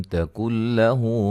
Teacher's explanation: یہاں نون ساکن کا ادغام بلا غنہ ہے، غنہ نہیں کریں گے